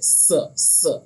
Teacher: सीन जो होता है उसको पढ़ते स, इसमें सीटी की आवाज़ निकलती है। और सा जो होता है उसमें उसको एकदम बारीक पढ़ते हैं, उसमें ज़रा भी सीटी की आवाज़ नहीं निकलनी चाहिए।